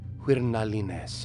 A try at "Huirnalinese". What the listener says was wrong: I don't know, you stressed that second syllable pretty hard.